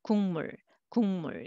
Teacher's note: Separately, you can read, but together [궁물] you will hear 응 sound instead